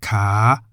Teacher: in the rising tone as it begins with the high-class consonant kokai